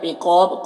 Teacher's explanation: قاف حروف مستعلیہ میں سے ہے، پر پڑھیں گے اور یہاں پر الف مدہ ہے. یہاں پر وقف کریں گے تو با کا زیر سکون سے بدل جائے گا تو با میں قلقلہ ہوگا اور مد عارض وقفی بھی ہوگا، تو اس طرح سے پڑھیں گے.